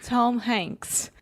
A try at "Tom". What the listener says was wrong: Tom. Fecha a boca com M.